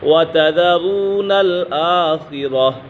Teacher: را کے بل پیش ہے تو اسی وجہ سے را کو پر پڑھیں گے